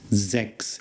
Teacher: the S at the beginning is a Z sound, and the CHS at the end is much like an English X